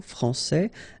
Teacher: here you get this final S that you don't pronounce